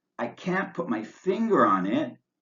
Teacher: I can't put my finger on it we use pause intonation the voice goes up on the last stressed word before the comma then wavers down and up slightly